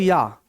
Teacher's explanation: या में आप खुद ही देखो ई और आ का उच्चारण आ रहा है